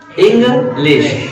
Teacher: तो देखा, इंग्लिश, एक इंग आपका समझ लो एक डिसेंडिंग प्रोसेस मतलब स्टेबल फॉर्म में है वो, और लिश थोड़ा सा खींचते हुए असेंडिंग फॉर्म में, चढ़ते हुए अंदाज में है, आरोही क्रम में है।